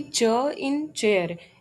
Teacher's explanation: the correct answer is voiceless palato alveolar affricate